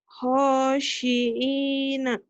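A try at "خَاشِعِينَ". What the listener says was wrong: Itu kan ada titiknya. kemarin kamu lupa terus tuh. Khodi'ina ya.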